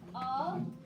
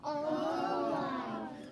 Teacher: Now, if you look at that A does not say A, it doesn't say a, it's making a schwa sound